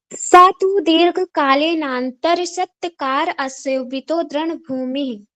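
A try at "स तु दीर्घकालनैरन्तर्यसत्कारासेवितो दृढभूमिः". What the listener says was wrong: आप ना प्रोनाउंस बहुत फास्ट करते हो, थोड़ा सा इसको स्लो करो। आपकी जो बोलने की स्पीड है, इसको थोड़ा सा कम करो, धीरे धीरे पढ़ो।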